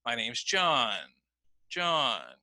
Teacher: notice my voice goes down and the main change in pitch occurs on my name John because John is the focus word of the sentence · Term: falling intonation